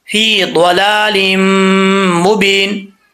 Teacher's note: لام کے بعد میم مشدد ہے تو یہاں پہ ایک الف کی مقدار غنہ کریں گے، ادغام ہو رہا ہے یہاں پہ.